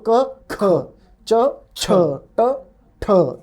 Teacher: the only difference is the aspiration the H part of it